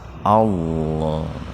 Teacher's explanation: huruf lam didahului fathah. Jadi lamnya dibaca tebal. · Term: tafhim lafdul jalalah